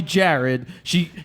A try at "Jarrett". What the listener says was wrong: Like with a T, Jared.